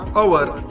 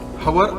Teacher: HOUR याचा उच्चार अवर असा आहे, हवर असा नाही, अवर.